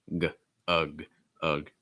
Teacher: you'll notice is a schwa sound. So it's very reduced